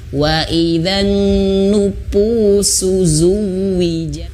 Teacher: bibir bawah yaitu yang bagian dalam itu menyentuh ujung gigi seri atas tempat kita gigit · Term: Fa